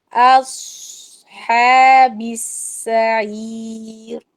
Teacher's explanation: صاد کو موٹا کر کے سیٹی کے ساتھ اس کو روکنا ضروری ہے، نہیں تو قلقلہ ہو جائے گا.